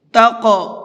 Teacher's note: خَيْرَ الزَّادِ التَّقْوَىٰ، خیرہ کے خا کو مبھر کے پڑھیں گے، اور تقویٰ کے قاف کے اندر قلقلہ کریں گے، یعنی ہلکا سا آواز کو ڈبل کر کے پڑھیں گے